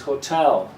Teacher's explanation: the second syllable is the strong one so this little vertical line shows you that the syllable after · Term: strong syllable